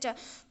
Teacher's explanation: च बोलेंगे हमेशा आपके तालु में सटेगा तभी बोलाएगा, आप उसे जीभ को ऊपर करके नहीं बोल सकते च।